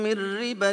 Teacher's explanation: ان كلا من النون الساكنه والتنوين لم يظهرا في النطق بينما قام بنطق الحرف الذي بعدهما مشددا وهذا الحكم يا ابنائي حكم تجويدي يقال له ويطلق عليه الادغام